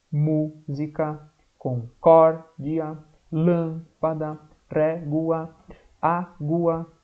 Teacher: todas elas são proparoxítonas porque a terceira trás para frente antepenúltima mais forte